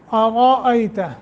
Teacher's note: را کو تفخیم کے ساتھ پڑھیں گے، یعنی منہ بھر کر موٹا کر کے پڑھیں گے